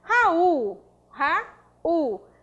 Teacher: Sílaba tônica, U. É uma oxítona prosódica.